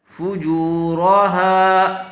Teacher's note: واو کے اوپر جزم ہے، اس لیے جیم کو واو سے ملا دیں گے. واو سے پہلے والے حرف پر پیش آیا ہوا ہے، اس لیے یہاں پر واو مدہ ہوگا، تھوڑا کھینچ کر پڑھیں گے